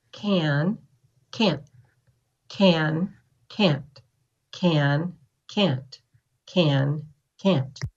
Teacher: or not so it isn't the te that's making the difference it's the time that you take saying it what we really hear is how long it takes to say the vowel